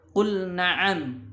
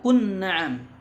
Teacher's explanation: menekankan untuk membaca idhar pada huruf lam ketika bertemu dengan nun pada kalimah atau firman Allah Subhanahu wa taala qul na'am, tidak dibaca qun na'am.